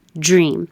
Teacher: This came up because it could sound like a J at the beginning because the American DR is holding the tongue on the top of the mouth for the D and then dragging it.